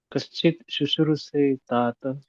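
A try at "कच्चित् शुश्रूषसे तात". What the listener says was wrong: No, it's not Kaschit, it is Kachit.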